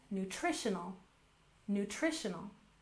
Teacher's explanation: We'll stress the second syllable, nutritional, nutritional.